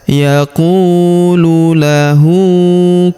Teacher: Huruf hu kita panjangkan dua harakat karena berharakat u terbalik ya.